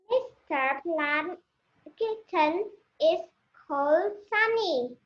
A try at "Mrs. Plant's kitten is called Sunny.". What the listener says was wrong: All right, it's Mrs. Plant's, not Mr. Mrs. Plant's kitten is called Sunny.